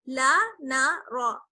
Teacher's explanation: لام اور نون باریک پڑا جائے گا اور را جو ہے وہ موٹا پڑا جائے گا. یہ دیکھیے ایک ایک لائن میں ہے, لیکن ان تینوں کے مخرج سیم ہے, مخرج ایک ہی جگہ ہے, لیکن آواز میں فرق ہے, یعنی ان کی ساؤنڈ جو ہے وہ الگ الگ ہے.